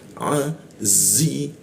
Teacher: huruf zi tebal ya, hembusannya itu kuat, gigi bertemu gigi dirapatkan, lalu posisi lidah itu di belakang gigi deh. Azi bertemu ya lagi dimatikan, maka tambah kuat di penekanannya, azi ya.